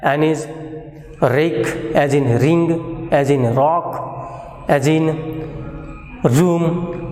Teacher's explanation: Tongue changes its position, it becomes concave, it moves towards the hard palate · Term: R sound